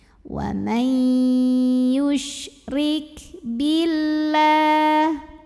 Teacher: Hati-hati kaf jangan hilang hamesnya ya, hames itu ada angin keluar. Kebetulan kalau kafnya ini sukun, anginnya itu terakhir.